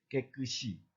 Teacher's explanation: 깨끗이 시가 올라붙어 가지고 이로 소리 나는 것이죠